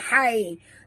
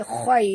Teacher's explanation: huruf kha ya sahabat. Jadi kita kena baca betul-betul tebal. Khai bukan hai, tapi khai.